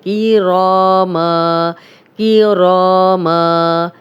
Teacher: را کو موٹا بھی پڑھیں گے اور 2 حرکات لمبا بھی کریں گے